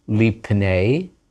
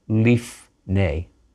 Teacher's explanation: And notice, as soon as you put a vowel sound, even a tiny one like a shva before that pei, a beged kefet letter, the dagesh disappears, and the P sound turns into an F sound.